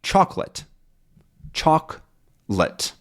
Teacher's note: in actual pronunciation, we say chocolate. Choc-let, which is two syllables.